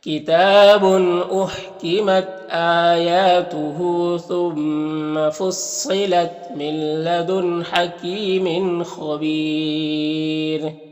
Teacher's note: تو پھر را کو باریک پڑھیں گے، کیونکہ رائے ساکنہ سے پہلے یا ساکن ہے تو باریک پڑھیں گے۔